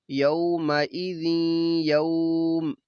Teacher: ادھر ادغام بھی ہے غنہ بھی ہے کیونکہ نون تنوین کے بعد یا ہے